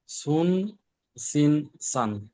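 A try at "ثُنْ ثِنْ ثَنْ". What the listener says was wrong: এই দেখেন অক্ষরে শিষ আসতেছে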